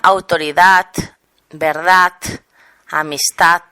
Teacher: la D final castellana en catalán se articula como sorda. En lugar de D se dice T.